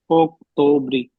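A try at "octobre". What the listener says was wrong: ब्रे नहीं, ब्र, अक्टोबर,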